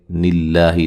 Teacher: لفظ اللہ کو باریک پڑھیں گے, اس سے پہلے زیر ہے